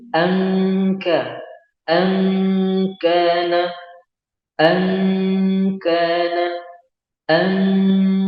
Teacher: kalau kita ikhfakan seperti pada kata angka, tipis ya, ka, tidak tebal